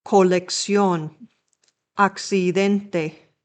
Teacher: The CC combination is pronounced like a ks or a c sound or like a kth in Spain.